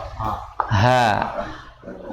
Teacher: Jadi dari tenggorokan paling bawah. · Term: ha besar